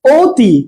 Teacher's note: কিন্তু অতীতে অ এর উচ্চারণ ও হয়ে যাচ্ছে